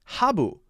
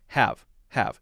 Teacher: change it to a one syllable word and make sure the b is a v sound